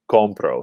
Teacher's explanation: in writing we see there's no accent mark here and when we pronounce it we put the stress on um the second to last syllable